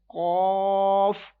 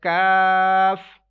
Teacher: first one will be read with thicker voice, second one will be read with thin voice